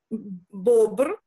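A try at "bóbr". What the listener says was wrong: Бубр, то у, бубр.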